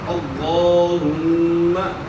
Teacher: تو یہاں لفظ اللہم کے لام سے پہلے والے حرف کے اوپر زبر ہے تو اللہم پڑھنا ہے۔ یہاں اللہم کا لام پورا ادا ہوگا، موٹا ادا ہوگا۔ اللہم میم مشدد ہے، اس کے اندر غنہ ہوگا، اللہم صلی علی۔